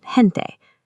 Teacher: G becomes a breathy h sound like in gente.